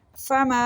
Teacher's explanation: میم کے ساتھ الف مدہ ہے، 1 سیکنڈ کے لیے لمبا کریں گے